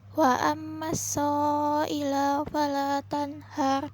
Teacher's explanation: Yang pertama gunnah karena mim fathah bertasdid, kedua matawi'i karena mim fathah bertemu alif.